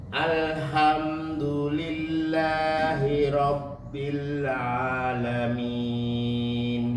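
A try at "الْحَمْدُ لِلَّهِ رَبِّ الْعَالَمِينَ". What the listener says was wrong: Lam dengan a masih kegabung Pak.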